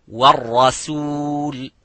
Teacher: So the ra is mufakham, as you can see, but the sin is muraqqaq.